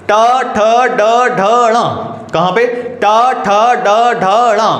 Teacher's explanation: जीभ आपकी मूर्धा को टच होने वाली। कहां पे बच्चों? मूर्धा पे। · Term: मूर्धन्य व्यंजन